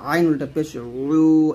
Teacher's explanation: এখানে ওয়াওটা দুই ঠোঁট গোল করে নিয়ে আসবেন, ওয়া উল্টা পেশ উ এরকম, আর ইয়াটা জিহ্বার মধ্যখান উপরতলার সঙ্গে লাগাবেন, ইয়া উল্টা পেশ ইউ, হামজা উল্টা পেশ উ হলকে শুরু থেকে, আর আইনটা চাপ দিয়ে নিয়ে আসবেন হলকে মাঝখান থেকে